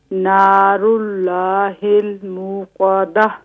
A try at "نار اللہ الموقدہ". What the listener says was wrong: موقدہ، یہاں واو ہے نا، واو کو واضح کیجیے.